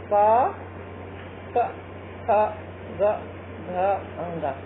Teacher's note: कंठ उच्चारण स्थान है और जो इनकी जाति बनती है उसे कहते हैं कंठवर्ण